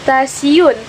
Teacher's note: pada kata stasiun, bunyi T itu dilafalkan sebagai bunyi T laminoalveolar. Perubahan bunyi hambat apikoalveolar T menjadi bunyi hambat laminoalveolar adalah karena pengaruh secara progresif dari bunyi geseran laminopalatal S.